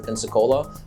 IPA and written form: ˌpɛnsəˈkoʊlə (Pensacola)